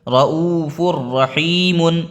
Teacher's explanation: فا کے اوپر تنوین ہے، اس کے بعد را آ گیا، تو یہاں پہ بھی ملا کے پڑھیں گے، فر ہو جائے گا یہ فر، یہاں پہ بھی کوئی غنہ نہیں ہے، تو اس کو ہم پورا پڑھیں گے۔